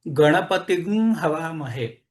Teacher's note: गणपती हवामहे असाच म्हटला जाईल परंतु शाखेमध्ये या गणपतीम च्या नंतर हवामहेतला ह आलेला असल्यामुळे त्या अनुस्वाराचा गु मध्ये रूपांतर होऊन हा मंत्र गणपतीग हवामहे असा म्हटला जाईल आणि वाजसनही संहिते तो गुण वाढवून गणपती गु हवामहे असा म्हटला